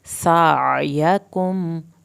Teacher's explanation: सीन को सीटी की आवाज़ के साथ पढ़ेंगे। सायकुम या की ज़बर को नहीं खींचना, मीम को नहीं हिलाना।